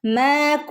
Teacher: മീമിന് ഇവിടെ അലിഫ് മദ് ഉണ്ട് രണ്ട് ഹറക്കത്ത് നീട്ടി കൊടുക്കണം